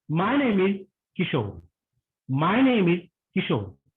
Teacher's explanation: The sound falls, the tone falls at the end while answering.